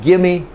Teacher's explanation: They're going to combine the V with the M. It's going to sound like gimme If they know you need extra articulation, they may give you extra articulation.